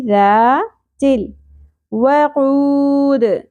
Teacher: زال نرمی سے ادا ہوگا، سیٹی کی اور بزنگ ساؤنڈ نہیں آنی چاہیے، شدت سے ادا نہیں کرنا، نرمی سے ادا کرنا ہے